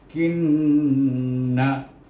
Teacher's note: kita kena baca dengan dengung dua harakah